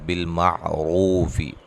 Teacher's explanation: بالمعروف را کو موٹا ادا کریں گے اور واو مدہ ہے۔